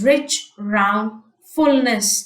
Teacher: Notice the alliteration of the R, the liquid rolling sound.